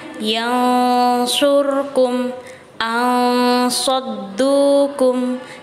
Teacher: Cara membaca ikhfa hakiki adalah dengan mengeluarkan suara nun atau tanwin dari rongga hidung sehingga terlihat samar